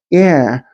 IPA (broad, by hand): æ